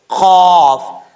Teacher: قاف کا مخرج جو ہے دو نقطوں والا جو قاف ہے اس کا مخرج ہے زبان کی جڑ اوپر والے تالو کے نرم حصے سے لگے تو قاف پڑھا جاتا ہے